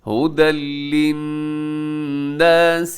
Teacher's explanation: ہدی للناس، اور دوسرا یہاں پر ادغام بھی ہو رہا ہے، ہدن پہ تنوین ہے اور تنوین کے بعد لام ہے جو کہ حروف یرملون میں شامل ہے۔ ادغام ہوگا لیکن بغیر غنے کے ادغام ہوگا